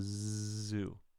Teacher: the Z sound is a voiced S. So, s, z. Tongue is in the same place.